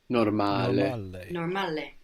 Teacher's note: we have the accent on the second last syllable, no? On the A, normale. And the vowels, we're pronouncing them clearly, not like English when we say normal.